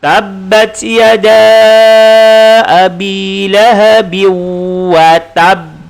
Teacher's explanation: Ada berhenti sekejap kemudian lantun. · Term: qalqalah akbar